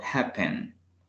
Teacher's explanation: El acento se le escucha al inicio